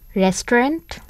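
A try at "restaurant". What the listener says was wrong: রেস্টুরেন্ট, exactly. কিন্তু ঠিক এরকমটি তো নয়, উচ্চারণটি হচ্ছে রেস্টুরেন্ট। রেস্টুরেন্ট এই টুটা আসলে নেই, রেস্টুরেন্ট।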